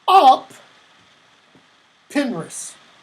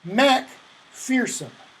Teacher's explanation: Where one has a P, the other has a K sound.